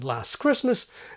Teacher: when T is dropped, as in last Christmas